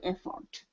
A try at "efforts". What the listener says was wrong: we're working on pronouncing that s right after the T